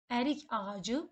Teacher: biz k-nı y tələffüz edirik, çünki ondan sonra sait gəlib